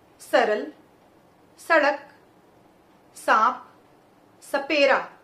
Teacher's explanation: तो देखिए जीभ जो है हमारी ठीक दांतों के पीछे टकराएगी। और बच्चों अगर ये ना ध्यान आए तो आप ये समझ लीजिए कि जिस प्रकार हम त वर्ग का उच्चारण करते हैं, त, थ, द, ध, उसी प्रकार हमें स बोलना है। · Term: दंते स